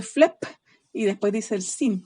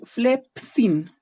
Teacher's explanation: La P con la S deberían estar en la segunda sílaba y no en la primera